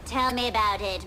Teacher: the sound is really coming out of her nose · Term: Nasality